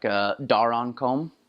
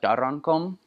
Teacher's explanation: They don't roll their R's like the rest of the Micronesians do in their languages. So a word like darankom, that's exactly how they'd say it.